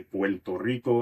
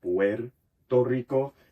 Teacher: But in terms of phonetics and phonology, the most important feature is lambdacismo, or lambdacism, which happens when you have a coda, meaning word final or syllable final, alveolar tap, like in English butter or Spanish pero. That becomes a L sound.